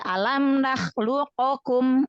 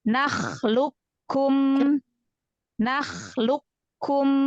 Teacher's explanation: langsung melebur ke huruf kaf ya, tanpa menyisakan sifat pada huruf qaf sukun, sifat qalqalah. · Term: idgham mutaqaribain